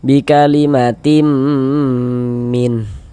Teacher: Kemudian dighunahkan. Jadi bagian timnya itu suaranya itu kita tahan, kita panjangkan sebentar ya. Ee kita gunahkan sepanjang kira-kira sepanjang dua harakat. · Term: idgham bighunah, digunnahkan